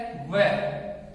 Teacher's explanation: वकारस्य दंतोष्टम, वकारस्य दंतोष्टम। वह एक अकेला ऐसा वर्ण है, स्वतंत्र है, जिसका उच्चारण दांत प्लस ओष्ठ, इसलिए इसको हम दंत प्लस ओष्ठ दोनों से उच्चारण मानते हैं।